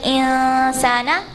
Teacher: And when you have إخفاء, you have to not pronounce the نون clearly, so you like half pronounce the نون